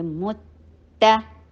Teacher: मीम के ऊपर तम्मा, होंठों को गोल कीजिए और ता के साथ मिलाइए